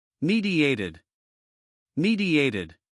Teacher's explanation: Here we have a Y sound bridge between I and A.